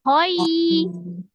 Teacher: Jadi diselesaikan dulu fathahnya. Ho, baru dia turunkan bibir dan rahang bawah untuk ya sukun. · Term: harfulin